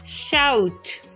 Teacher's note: O से लेके U की वॉइस तक हमने थोड़ा सा ग्लाइड करना है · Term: diphthongs